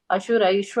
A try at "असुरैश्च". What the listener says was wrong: the first line la asuraischa cha sound, okay.